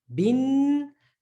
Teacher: No jerking sound because the noon is sounded. The sound is coming through the nose, right? The nasal sound. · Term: noon with a sukoon